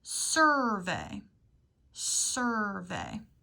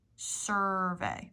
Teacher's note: The R-controlled vowel means we don't hear the U make a sound. We just hear the R.